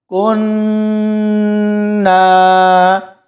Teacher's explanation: اس کے بعد دیکھیں کننا، یہاں پر ادغام بالغنہ ہوگا، یعنی کاف کو نون کے ساتھ ملائیں گے تو ہم نے تھوڑی دیر یہاں پر رکنا ہے، کاف اور نون کی آواز کو روکے رکھنا ہے، کننا۔ اس کے بعد نون کو ایک الف کی مقدار تک کھینچ کر پڑھیں گے۔